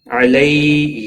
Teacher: یا لین ہے، تھوڑا نرمی کے ساتھ کھینچ کر ادا کریں گے